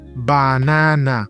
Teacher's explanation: And we have A, it's very open, A, like in banana. The 3 A's in banana sound the same, banana. And it's a very open sound.